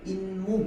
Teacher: 그러니까 음절 끝소리 규칙에 의해서 디귿으로 바뀌고, 이 디귿이 뒤에 나오는 미음 때문에 비음화가 일어나서 잇몸이 된다